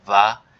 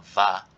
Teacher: contrast between the bilabial voice fricative and the labial dental voice fricative